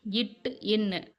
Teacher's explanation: நாவின் இடைப்பகுதி நடு அன்னத்தின் இடைப்பகுதியை பொருந்துவதால் பிறக்கும் எழுத்துக்கள் இச், இஞ்சு. நாவின் நுனிப்பகுதி அன்னத்தின் நுனியை பொருந்துவதால் பிறக்கும் எழுத்துக்கள்